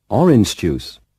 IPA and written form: ˈɒrɪnʤ ʤuːs (orange juice)